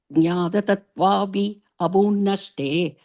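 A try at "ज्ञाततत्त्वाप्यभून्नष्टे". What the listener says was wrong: Again, and the api and a, generally you don't split it. You have to say it together. So jnata tattvapya bhunnashte.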